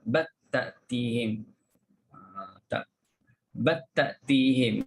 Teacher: masukkan lam dalam ta